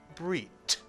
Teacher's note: in Sephardic Hebrew, the tuf without a dagesh is also pronounced as a t, t.